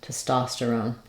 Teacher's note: I just don't want much vowel here on that first unstressed syllable.